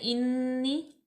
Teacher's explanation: نون مشدد ہے، یہاں پہ ہم غنہ پیدا کریں گے